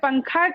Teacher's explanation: حروف اخفا آئے تو نون کی آواز کو ناک میں چھپا کر پڑھنا چاہیے، نوک زبان تالو سے ہٹا کر، جیسے اردو میں پنکھا کے نون کو پڑھتے ہیں۔